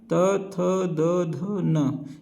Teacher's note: ये त वर्ण जो होता है, इनका उच्चारण स्थान दांत से होता है। इसे दंत भी कहते हैं।